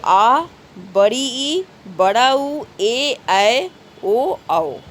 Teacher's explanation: और इनकी पहचान क्या है कि जब हम इनका उच्चारण करते हैं तो उच्चारण करते समय हमें 2 गुना समय लगता है, डबल समय लगता है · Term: दीर्घ स्वर